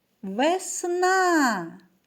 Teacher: цю карточку що позначає два склади промовимо разом слово покличемо весна куди падає наголос так на другий склад